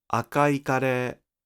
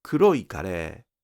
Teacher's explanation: In akai..., the pitch doesn't drop on i